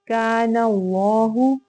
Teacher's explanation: जहां पे भी जबर या पेश आ जाएगी तो इसमें जलाला को हम पुर पढ़ेंगे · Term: तफखीम